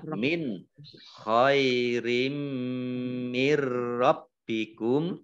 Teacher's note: Idgham masuk bi dengan gunnah, mendengung. Mendengung mim ditandai dengan mimnya ada tasdidnya, dibaca mendengung, ditahan 2 harokat. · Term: idgham bi gunnah